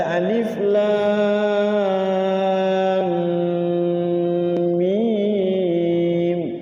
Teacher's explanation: Lamnya diidghamkan atau dimasukkan ke mim. Jadi lamnya enam harakat. Sebelum baca mim gunah dulu. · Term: mad lazim